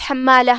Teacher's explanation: وامرأته حمالہ، کلمت حمالہ میں یہاں حرف الحا ہے، حا کی ادائیگی حلق کے درمیان والے حصے سے ہے، پھر میم پہ تشدید ہے، لہذا 2 حرف کے برابر ہمیں میم کو پڑھنا ہے، آخر میں تا پہ زبر ہے، لہذا اس کا دھیان رہے۔